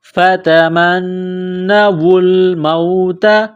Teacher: میم کو نون کے ساتھ ملانا ہے، نون مشدد ہے، غنہ کریں گے ، آواز ناک میں چبائیں گے، فتمنوا الموت، واو کو پڑھتے